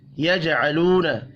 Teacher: जीम साकिन पर कलकला करेंगे। वाव मद्दा को एक अलिफ के बराबर खींच कर पढ़ना है।